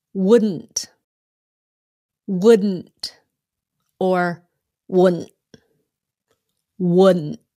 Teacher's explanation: you stop the T before it comes out